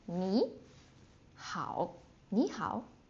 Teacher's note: So when two third tones put together, the first one will become a second tone. So you don't say 你好, that is extremely difficult.